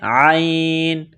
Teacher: عین گلے کے درمیان سے زور لگا کر عین کو نکالیں گے